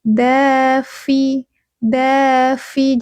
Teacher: Punggung ujung lidah menyentuh pangkal gigi dari atas.